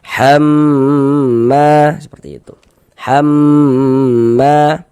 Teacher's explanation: Ini huruf yang bertasydid gunnah musyaddadah kita gunnahkan, kita dengungkan sehingga di bagian ham, nah di bagian situnya tuh kita tahan sejenak suara kita gunnahkan kira-kira sepanjang 2 harokat.